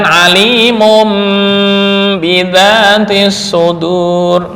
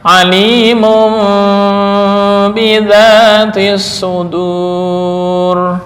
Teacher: Yang tepat menurut jumhur ulama tajwid adalah remang-remang setelah mengganti dengan mim.